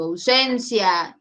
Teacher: En ausencia, tenle cuidado, porque aquí tienes dos, ¿sí? En AU sería decreciente, Claro, decreciente porque el sonido baja a U y creciente en IA.